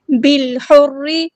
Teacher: گے، را ہمارا ہیوی لیٹر ہے پورا ادا کریں گے، بالحر، با کو ہم نے لام کے ساتھ ملا دینا ہے، حمزۃ الوصل ہمارا ڈراپ ہو جائے گا